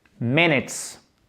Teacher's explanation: Minutes. Accent tonique sur la première syllabe.